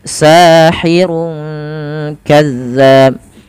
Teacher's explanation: kita menyamarkan dhammatainnya atau suara nunnya kepada huruf kaf. Sahirun langsung ke huruf kaf ya. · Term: ikhfa hakiki